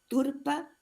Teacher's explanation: la ausencia total de sonoridad de la consonante que inicia la segunda sílaba del nombre